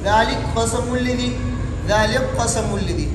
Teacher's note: یہ کاف نہیں پڑھ جائے گا. کاف کا قاف میں ادغام ہوگا، ادغام تام ہوگا